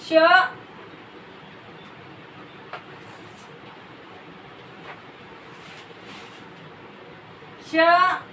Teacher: श या व्यंजनाच्या उच्चाराच्या वेळी हवा मुखवाटे जोरात बाहेर फेकली जाते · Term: उष्मे